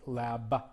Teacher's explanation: an S so here's um some examples the B Sound Lab you hear the voice at the end right lab and so you would say Labs okay Globe Globes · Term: voice consonant